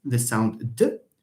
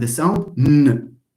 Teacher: N is louder. N is louder because the air flows from here. It has a lot of room for resonation. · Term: nasals